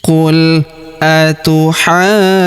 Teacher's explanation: huruf ju setelah kita tahan dan tekan, kita panjangkan dua harakat karena wau sukun di depannya